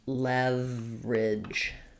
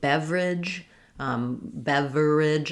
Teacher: There's almost no schwah there before that R. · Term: reduce